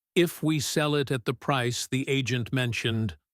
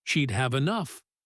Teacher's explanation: Speakers very often lift their pitch slightly on the if clause, almost like they're leaving a question hanging in the air, some unfinished business, and then let their pitch drop and settle on the result clause as if closing a small door once the idea is complete. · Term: intonation